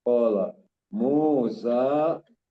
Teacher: mu-nya mad tabi'i, sa-nya juga mad tabi'i. Keduanya dibaca 2 harokat.